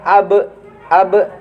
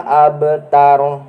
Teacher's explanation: qalqalah anu aya di tengah kalimat eta qalqalah sugro teh alit janten kaluarna eta qalqalah henteu ageng